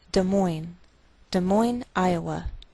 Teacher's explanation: Note that we treat the name of this capital like one word, and the greater stress is on the second part